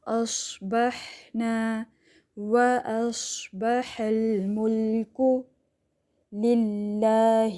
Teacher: ہمس کہتے ہیں ایئر فلو کو، سواد میں سیٹی آتی ہے